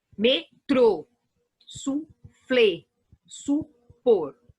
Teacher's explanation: A sílaba tônica é a última. Independente se ela tem o acento ou não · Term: oxítona